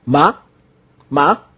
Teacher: This ma starts from a low pitch and rises fast and short.